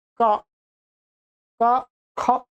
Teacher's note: आप क ख जब उच्चारण कर रहे हैं तो ख में थोड़ा सा अधिक हमें शक्ति लगानी पड़ रही है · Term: महाप्राण